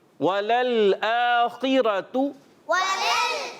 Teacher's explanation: واو ہونٹوں کی گولائی سے, لام پہلے پر زبر, دوسرا ساکن. · یہ لام دوسرے والا ہلنا نہیں چاہیے. ٹھیک ہے, اس میں کلکلا نہ ہو.